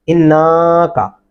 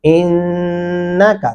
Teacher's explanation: نون کو لمبا نہیں کیا ان اس کو غنہ کہتے ہیں اس کو لمبا کرنا نہیں کہتے